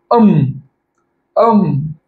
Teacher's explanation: अम उच्चार दोघ उठांच्या एकत्रीकरणाशी केल्याशिवाय होणारच नाही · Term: ओष्ट्य